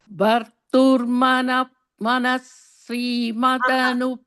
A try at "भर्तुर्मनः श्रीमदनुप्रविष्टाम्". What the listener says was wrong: there you don't say the is you should say ish bharturmanash